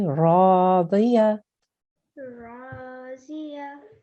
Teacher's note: Try to round in your mouth slightly when you're saying the ra there.